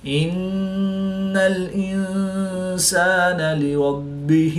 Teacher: نون مشدد میں ہمیشہ غنہ ہوتا ہے تو یہاں پر ہم غنہ آنی کر کے پڑھیں گے · نون ساکن کے بعد سین حروف اخفا میں سے ہے تو یہاں پر اخفا ہوگا، یعنی غنہ زمانی کر کے پڑھیں گے۔ با حروف قلقلہ میں سے ہے اور یہ مشدد ہے تو یہاں پر قلقلہ خوب جماؤں کے ساتھ کریں گے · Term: قلقلہ کبریٰ